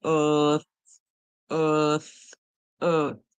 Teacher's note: And the TH, we hear tongue between our teeth.